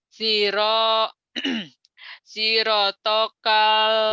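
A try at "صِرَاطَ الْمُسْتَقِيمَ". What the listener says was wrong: Yang panjangnya mana? Yang panjangnya mana? Tonya pendek.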